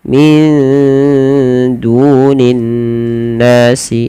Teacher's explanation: du ada mad tabi'i, dhammah bertemu waw panjangnya 2 harakat